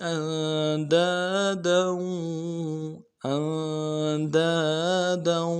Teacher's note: ان میں نون ساکن غنہ کریں گے، دال کے بعد الف مدہ ایک الف مقدار میں کھینچیں گے.